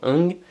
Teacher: certaines restrictions par rapport à des consonnes nasales vélaires qui n'apparaissent qu'en fin de syllabe